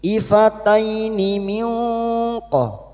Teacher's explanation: Nun sukun bertemu qaf ikhfa hakiki kita samarkan bunyi nun sukun dan mendengung selama 3 harokat.